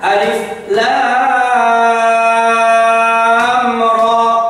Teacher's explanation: Ro-nya 2 harokat, gak boleh ro terpanjang